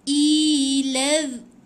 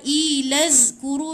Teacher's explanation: Zal, hujung lidah di antara 2 gigi. So bunyi dia macam tumpul sikit. Dia tak ada bunyi berdesir, dia tidak ada bunyi berdesir z.